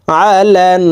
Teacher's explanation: হরকতের বামে নুনের উপরে তাসদি আছে কারণে এই লাম তাসদিদ ওয়ালা নুনের সাথে নাকের পাশে থেকে তিন সেকেন্ড পরিমাণ গুন্না করে ধরে রাখবো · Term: ওয়াজিব গুন্না